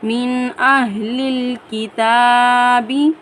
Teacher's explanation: حروف حلقی میں سے حمزہ آنے کی وجہ سے نون پر غنہ نہیں کریں گے۔ من اہل الکتاب، لام کو لام جزم والے لام کے ساتھ میں ملائیں گے۔ · تا کے اوپر کھڑی زبر کو ہم ایک الف کی مقدار کھینچ کر پڑھیں گے